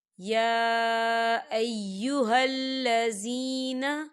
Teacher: غفور الرحیم، یا ایہا الذین، دیکھیں یا کے اوپر کھڑی حرکات ہے اور اس پہ مد بھی ہے، تو ہم اسے 4 حرکت کے برابر کھینچی پڑھیں گے